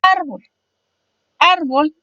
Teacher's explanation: Árbol se divide en 2 sílabas, ar y bol, siendo su sílaba tónica la segunda de atrás hacia adelante, es decir, la penúltima